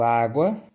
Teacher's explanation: Água, U é uma semivogal, A uma vogal. · O ditongo é o encontro de uma vogal mais uma semivogal, ou semivogal mais uma vogal na mesma sílaba, e podem ser classificados em ditongo crescente ou ditongo decrescente. O ditongo crescente, primeiro vem a semivogal e depois vem a vogal. O som cresce do mais fraco para o mais forte.